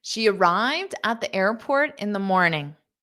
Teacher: notice how fast that at the at the at the airport in the in the morning because they're unstressed